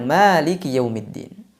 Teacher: kita akan bacanya panjang kalau riwayat Imam Hafs dari Imam Asim. Padahal secara penulisan tidak ada alif setelah mim.